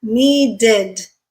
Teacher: Need ends with a d, so you have to add a syllable again.